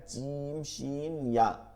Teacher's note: জিব্বার মধ্যখান তার বরাবর উপরে তালুর সঙ্গে লাগায়া জিম শিন ইয়া